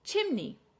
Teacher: Chimney. Stress on the first syllable.